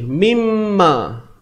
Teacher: idgham bhunnah idgham ni apa memasukkan memasukkan dengan dengung idgham bighhunnah memasukkan bunyi Nun mati ke dalam mim